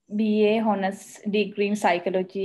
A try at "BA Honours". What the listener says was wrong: BA Honours, that H is silent.